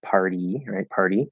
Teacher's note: now we have to go from r to flap into e so we have to flap and go forward · we have a t at the start of an unstressed syllable so it's a weak t between two vowels again we're going to flap it · we have r which is a vowel it's an r colored vowel